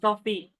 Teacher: word coffee is stressed on the first syllable cough, which has greater prominence than the second syllable